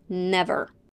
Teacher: the first e is stressed and pronounced as a short e and the second one as the schwa